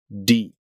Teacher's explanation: in English the very tip of your tongue hits the alveolar Ridge that Ridge right behind your front upper teeth D but in Spanish the tip of your tongue flattens out